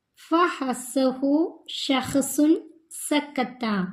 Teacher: മഖ്റജിൽ ഊന്നൽ ദുർബലമായതിനാൽ ഉച്ചാരണത്തോടൊപ്പം ശ്വാസം പുറത്തു പോവൽ